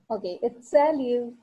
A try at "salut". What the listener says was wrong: Yes, it's not salute, it's salut. T is silent. The last letter in French is silent the maximum of times.